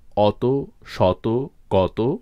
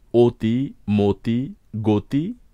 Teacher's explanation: এখানে শব্দের শুরুর প্রতিটি অই ও বা ওকারের মত উচ্চারিত হয়েছে